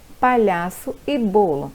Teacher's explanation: A sílaba com mais intensidade recebe o nome de tônica e as de som fraco, átonas, como no exemplo, palhaço e bolo. A sílaba tônica no palhaço é o lhá e a sílaba tônica do bolo é o bo.